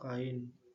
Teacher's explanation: Meskipun letaknya berdampingan, tetapi pelafalannya atau dibacanya tidak melebur. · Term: Deret vokal